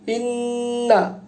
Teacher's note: ইন্না এখানে নুন মুশাদ্দাদ, নুনের উপরে তাসদীদ আছে, যে কারণে এটা দুইবার উচ্চারিত হবে। এবং যেহেতু তাসদীদ আছে, নুন মুশাদ্দাদ, এটা হচ্ছে ওয়াজিব গুন্না।